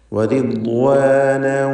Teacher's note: തൻവീനിനെ വാവിലേക്ക് ലയിപ്പിച്ച് മണിക്കണം, ഇദ്ഗാം ബിഗുന്ന